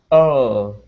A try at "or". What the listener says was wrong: You need to curve your tongue upwards. So your tongue is still pointing downwards, right? So we'll keep working on that because with that R, okay.